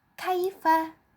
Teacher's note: huruf Kaf nya bertemu dengan ia sukunnya sehingga dibaca Kai